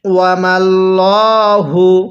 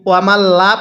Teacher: ওয়ামাল্লাহু, ওয়ামাল্লা পড়বেন না, লামটাকে চিকন করে পড়া যাবে না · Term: মোটা করে